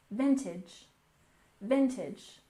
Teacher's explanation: And next we have vintage, with stress on the first syllable.